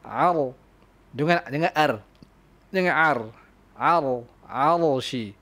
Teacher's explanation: Ra yang sukun, sakinah. Sebelum dia berbaris fathah ataupun dhamma, maka anda kena tebalkan dia. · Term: Ra sakina mufakhama